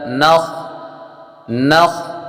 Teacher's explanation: خا حروف مستعلیہ میں سے ہے، پر کریں گے